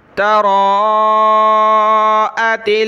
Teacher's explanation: مد ہے، اس کو کھینچنا بھی ہے، سخت نہ کریں، سختی کے ساتھ نہیں پڑھیں گے، صرف کھینچیں گے را کو